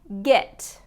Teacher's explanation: Now this one's g, it, and it has that short I sound instead of the short E